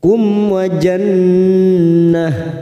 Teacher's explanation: nun yang bertasdid gunnah musaddadah, kita tekan 3 ketuk.